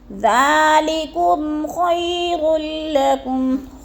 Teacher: میم ساکن کے بعد خا آ گیا ہے تو ادھر اظہار شفی غنہ نہیں کریں گے، لفظ کو ظاہر کر کے پڑھیں گے